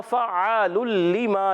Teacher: गुन्ना क्या होगा इगाम बिला गुन्ना गुड इदम बिला गुन्ना होगा इगाम भी करना है मगर बगैर गुन्ने के इगाम करना है